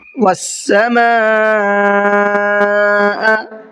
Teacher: سما کے اندر یہاں پر بڑا مد ہے، مد متصل کا قاعدہ ہے، اس لیے یہاں پر 4 سے 5 الف کے برابر کھینچ کر کے پڑھنا ہے۔